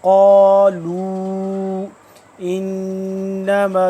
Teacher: لام واو پیش لو مد ہے، تھوڑا لمبا کریں گے 2 سے 3 الف کے برابر. قالوا انما، نون مشدد آ گیا تو یہاں پہ کیا ہوگا، غنہ ہوگا، 1 الف کے برابر لمبا کرنا.